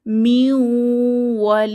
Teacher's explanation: ওয়াও দিয়ে দেখতে পাচ্ছি মিন ওয়ালিন এখানে আমরা পড়বো মিউন অর্থাৎ নুন সাকিনের পরে ওয়াও এসেছে আমরা গুন্নাহ সহ মিলিয়ে পড়বো